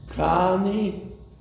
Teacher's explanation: For 2 weeks, he dropped the na, which is something that children doing in all languages, to drop unstressed preposed particles. He lengthened the root vowel of the verb.